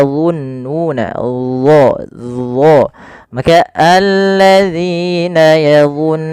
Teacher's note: huruf dho ya makhrajnya sama dengan huruf dzal tapi ketebalannya berbeda. · Yang pertama sifat istira yaitu pangkal lidah kita terangkat. Yang kedua yaitu sifat idbaqnya lidah itu lebih melekat ke langit atas.